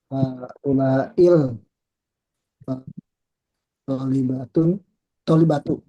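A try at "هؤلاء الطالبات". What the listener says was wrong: Tolibatu. Iya. Tapi ada alif lamnya ya.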